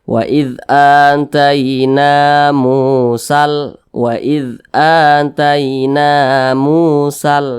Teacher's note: Maka huruf nunnya ini dia dibaca panjang. Namanya matobi'i. Panjangnya itu 2 harakat atau kira-kira 2 ketukan.